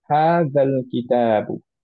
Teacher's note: দুইটা সেপারেট ওয়ার্ডে যখন আমরা কানেক্ট করি তখন লাস্ট মাদটা আমাদের বাদ চলে যায়